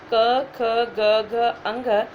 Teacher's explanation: कवर्ग का जो उच्चारण है वो कंठ से होता है।